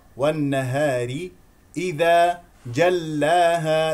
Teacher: النون مشدده غنه بمقدار حركتين اي الراء مرققه لانها مكسوره والنهار اذا جلاها لا تمسك اللام